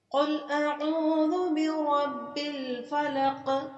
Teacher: اس میں قاف کو موٹا کر کے پڑھیں گے